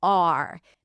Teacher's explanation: We don't hear a clean pronunciation of the ah sound before the R.